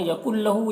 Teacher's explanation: نون لام کے ساتھ مل جائے گا، نون ساکن کے بعد لام حروف جر ملون میں سے تو ادغام تام ہوگا، بغیر غنہ کے سے پڑھیں گے.